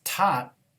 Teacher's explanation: It would actually get pronounced as tot because in this position, the rule is that the phoneme T gets pronounced as the aspirated one t at the beginning of a syllable before a vowel. It gets pronounced as the unreleased one at the end of a syllable.